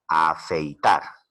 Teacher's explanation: es una palabra aguda ya que la mayor fuerza de voz recae en la última sílaba